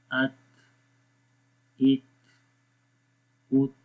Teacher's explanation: ہوا تھوڑی سی جاری رہتی ہے جس وجہ سے ان حروف کے اندر تھوڑی کمزوری ہو جاتی ہے. تھوڑے یہ نرمی کے ساتھ ضعیف آواز کے ساتھ پڑھے جاتے ہیں.